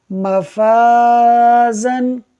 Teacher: فا باریک حرف ہے، الف سے پہلے ہے، لہٰذا الف کو بھی باریک پڑھا جائے گا